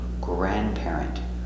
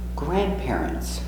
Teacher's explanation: Remember, the D is silent, no D.